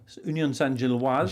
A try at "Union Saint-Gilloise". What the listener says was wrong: Gilloise, the E at the end, so you have to say the E.